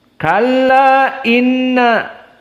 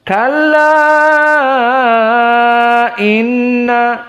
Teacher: Abu Amr dengan alqasr dijadikan dua harakat saja berbeda dengan jumhur yang dibaca dalam keadaan tawassut